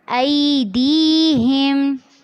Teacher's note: ڈی میں یا ساکن سے پہلے زیر ہے تو اس کو لمبا کرنا ہے